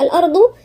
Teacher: الضاد هنا من عند مخرج الأضراس حرف الضاد ومفخم